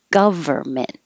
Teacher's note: forget about that n we don't say it government and organizations and yes it it is possible to say